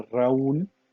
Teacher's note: Raúl, la sílaba tónica es la última. Es la última la sílaba tónica, pero mire, termina en L, pero se tiene que tildar.